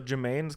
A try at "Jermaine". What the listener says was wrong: Jermaine. Jermaine.